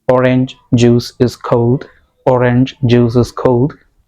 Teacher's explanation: Ch and j sounds cannot be linked. You have to say them separately.